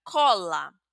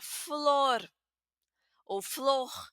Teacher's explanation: Pero fíjense que son pronunciaciones diferentes. En cola es abierta, en flor es cerrada. Eso pasa aquí, por ejemplo, porque es una palabra que termina con R.